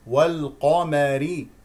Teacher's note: القاف مفخمه والراء مرققه لانها مكسوره